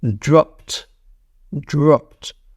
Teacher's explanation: Regular verb ends in P, which is an unvoiced consonant, ends in T. T sound. Dropped.